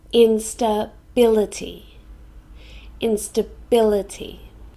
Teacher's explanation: It has 5 syllables. In-sta-bil-e-ty. And we stress the 3rd syllable.